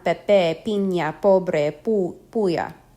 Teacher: company the letter P is pronounced like the P of spin it is not followed by a puff of air like the English P at the beginning of a word